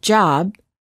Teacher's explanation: say the word job we cannot continue the final B sound we stop the airflow by closing our lips therefore B is a stop if we quickly open our lips we can then release the